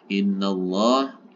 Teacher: Allah bukan illa, karena di awal dari lafaz Allah ini didahului dengan huruf berharokat fathah. Maka lafaz Allah dibaca tebal. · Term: lafaz Allah tebal